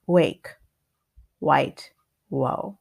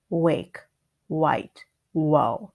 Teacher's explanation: the W is actually very close to the R but with the W your mouth is more round so instead of your tongue being trapped next to your teeth